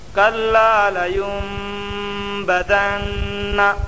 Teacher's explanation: یم میں اقلاب ہوگا نون ساکن کے بعد با آیا، اس لیے نون کو میم سے بدل کر غنہ اور اخفا کے ساتھ پڑھیں گے